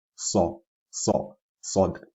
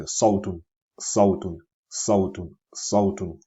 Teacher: Sod is thicker and heavier on the tongue than Sin.